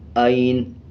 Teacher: نون کے اوپر کا زبر سائلنٹ کریں گے اور نون کو آدھا پڑھیں گے اور اس میں یہ خیال رکھنا ہے کہ اس کو پڑھتے ہوئے لمبا نہیں کرنا۔